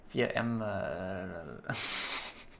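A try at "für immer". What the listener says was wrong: Immer. Yeah, that's why they think you say Emma. Für Emma? If you say für Emma, it's for Emma. It sounds like for Emma.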